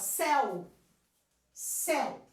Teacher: Quando eu falo céu, eu tenho a vogal forte, que é o som do E, e eu tenho uma fraca, metade do som dessa vogal, que é um som vocálico, metade dele, que é o U, céu. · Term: semivogal